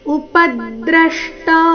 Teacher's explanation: ಪ ಮತ್ತೆ ದ್ರ ಎರಡು ಅಕ್ಷರ ಅಕ್ಷರಗಳ ಮೇಲೆ ಆಘಾತ ಬರಬೇಕು